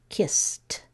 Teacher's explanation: I hear that S is a motor off, and there's no second syllable created, so it's going to make the t sound.